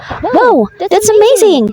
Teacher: So as you observe, the pitch of the voice is going higher, or the pitch of the voice is rising. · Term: rising intonation